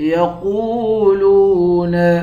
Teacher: قاف کو واو کے ساتھ ملا کر پڑھیں گے، لام کو بھی واو کے ساتھ ملا کر پڑھیں گے، دونوں حروف مدہ ہے، ایک الف کی مقدار کھینچیں گے، قاف کو موٹا پڑھیں گے